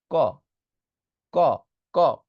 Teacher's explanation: ক বললে কিন্তু বাতাস বের হয় না